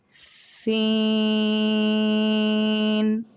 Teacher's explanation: دیکھیں، آپ اس تصویر میں دیکھ سکتے ہیں کہ اوپر والے دانتوں کو نیچے والے دانتوں کو قریب لایا گیا ہے، پورے دونوں دانتوں کو ایک دوسرے کے ساتھ جوڑا نہیں گیا، دونوں کے درمیان ایک خلا ہے، اور اتنا مطلب ہمارے دانتوں کے بیچ میں وقفہ ہے کہ بس ہوا کو گزارا جا سکے، جہاں سے سین کی آواز نکلتی ہے۔